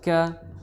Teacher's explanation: Kemudian kaf, ya, di pangkal tenggorokan bertemu dengan pertengahan langit-langit atas. Ka disertai dengan hembusan nafas